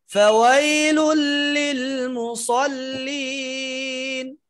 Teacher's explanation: প্রথমে ফা বাতাস জারি করে, তারপরে ওয়াই ওয়াই ওয়াও ঠোঁট গোল করে